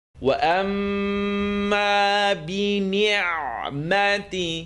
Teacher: meme shadda, full nasal sound.